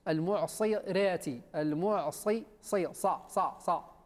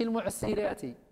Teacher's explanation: ولكن الصاد اهملتيه وهي حرف مستعل مطبق مطبق لابد ان اللسان يصعد الى خاصه ا يطلع يصعد الى